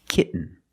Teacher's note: When you have T-E-N, T-O-N, or T-A-I-N at the end of the word, and the syllable is not stressed, the T makes a different sound. We have to make a stop T and link it to the N.